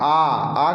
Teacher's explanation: आ का उच्चारण कीजिए तो मुख का जो द्वार है पूरा खुलेगा पूरा ओपन होगा